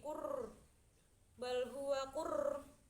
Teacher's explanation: Lanjut di ayat 21, bal huwa qur'anum majid, itu ada bacaan tafkim karena ada ro sukun yang sebelumnya huruf domah